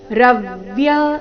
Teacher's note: ರವ್ಯ ರ ಮೇಲೆ ಆಘಾತ